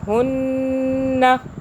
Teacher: मुनशद्दद गुन्ना किया, होल्ड किया यहाँ पे